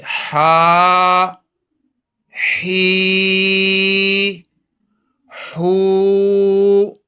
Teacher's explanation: تھوڑا گلے کو زور دینا ہے، اور یہ گلے کی بالکل بیچ سے ادا ہوتا ہے